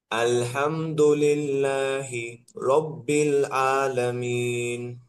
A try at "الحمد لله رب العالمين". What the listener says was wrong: হ্যাঁ, এখানে ওই সমস্যাটা নাই, কিন্তু আলামিন এখানে আপনার মাস করতে হবে বেশি বেশি, আইনটা হামজার মতো হয়ে যাচ্ছে।